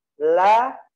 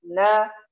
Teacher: Ini bedanya, kalau lam sedikit ke gigi, sedangkan na di gusinya. Na, la, ra ke belakang.